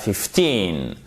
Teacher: Sur 15, l'accent tonique est sur la seconde syllabe